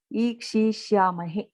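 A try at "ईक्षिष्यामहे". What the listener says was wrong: Ikshishyamahe. You are pronouncing it a little long. Short. It is Hrasva ikara.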